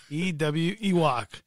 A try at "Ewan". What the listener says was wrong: It's an N. Ewan. Ewan. Ewan.